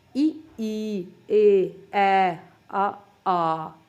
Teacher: ਇਹਨਾਂ ਨੂੰ ਜਦੋਂ ਆਪਾਂ ਉਚਾਰਦੇ ਹਾਂ ਤਾਂ ਆਪਣੇ ਬੁੱਲ ਗੋਲ ਨਹੀਂ ਹੁੰਦੇ ਬਲਕਿ ਚਪਟੇ ਹੋ ਜਾਂਦੇ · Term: ਅਗੋਲ